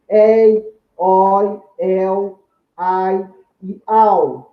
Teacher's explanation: Todos eles formando ditongos decrescentes formados por vogal, som longo, seguido de semivogal, som breve.